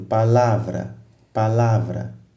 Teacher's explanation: É na sílaba lá. Então, a sílaba lá é uma sílaba tônica, porque é aí onde tu gastas mais energia.